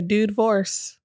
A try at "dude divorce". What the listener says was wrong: You have to be extra with the pronunciation. A dude divorce. You sound like you're saying it in 3 syllables. Are you trying to like make up for the lack of phonics?